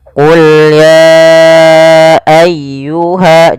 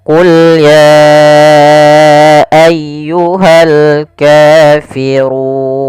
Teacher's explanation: Kemudian pelafal ayyuhal kafirun ditekan ya-nya.